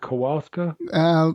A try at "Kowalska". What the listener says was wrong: Actually, it's Kowalska. The W is a V in Polish.